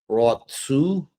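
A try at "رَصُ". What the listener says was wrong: So there's no cutting of the air. I don't know if you. It's just raw su.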